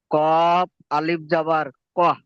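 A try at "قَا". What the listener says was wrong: আলিফ মাদা একটু টান দিন তো ক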